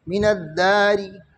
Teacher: رامہ مکسور وقف بالروم کی حالت میں باریک پڑی جائے گی · زیر کو 3 حصوں میں تقسیم کر دیں گے، 2 حصوں کو چھپائیں گے اور تیسرے حصے کو ظاہر کریں گے۔